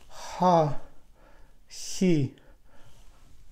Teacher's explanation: Again, sound very close to English, I mean in the movement, because we move the back of the tongue to the soft palate, but we don't touch it